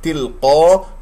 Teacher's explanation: قاف مفخم مرتبة أولى لأنها مفتوحة بعدها ألف